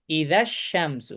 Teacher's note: জি। হ্যাঁ, এখন যখন আমি ইদা শব্দটাকে আর শামসু শব্দের সাথে কানেক্ট করছি তখন এই ইদার এই যে যেটা মাদ্দুল আসলিটা, এটা স্কিপ হয়ে যাবে। পাশাপাশি হামজাতুল ওয়াসলের যে উচ্চারণটা এটাও স্কিপ হবে।